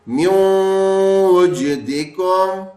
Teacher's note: غننے کی آواز آئی، نون کی آواز نہیں آئی، اور واو تشدید کی شکل پکڑ لی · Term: ادغام کا غنہ